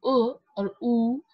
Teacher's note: we would see the back of her tongue is moving higher